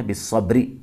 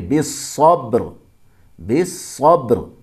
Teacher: یعنی را بھی ساکن کریں گے، را کے نیچے زیر نہیں پڑھیں گے، اصل میں بالصبری، لیکن رکیں گے تو پڑھیں گے بالصبر، بالصبر۔